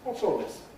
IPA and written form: ˈwɒts ɔːl ˈlɪs (What's all this?)